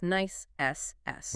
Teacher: nice ends with a clear, unvoiced S sound. It's not the buzzing Z we heard in please, it's nice SS.